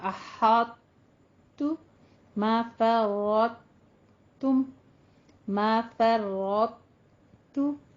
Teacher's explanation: simple اس کی ادائیگی یہی ہے کہ قلقلہ ختم، صرف آپ نے یہ کرنا ہے دونوں کو آپ نے مکمل طور پہ، جیسے احتو نہیں کہنا، احتو نہیں کہنا، تا ہی ادا نہیں کرنا، بلکہ پہلے طا ادا کرنا ہے اور پھر تا ادا کرنا